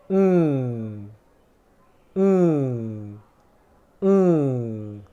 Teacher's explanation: So to get around that, like I explained a moment ago to make this sound correctly, all we do is we stop airflow whilst the tongue is still in the /ŋ/ position